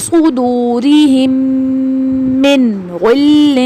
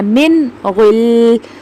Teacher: غین کی مثال دیکھتے ہیں، فی صدورہم من غل، ٹھیک ہے، من غل، یہاں پہ ایسے نہیں کرنا، نہیں کرنا، یہ اخفا ہو جائے گا تو یہ غلط ہو جائے گا، ہم نے یہاں پہ نون کو ظاہر کر کے پڑھنا ہے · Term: اظہار